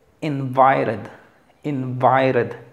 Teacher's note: Otro diptongo que se acentúa, vi.